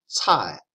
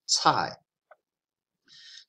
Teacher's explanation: CAI in the pinyin is similar to a TS, and then you've got like an AI sound, 菜. So your tongue is just aspirating that sound.